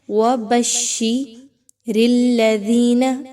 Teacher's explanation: ذال زیر یادی یا مدہ ہے، 1 سے 2 الف کے برابر اس کی ادائیگی رکھیں گے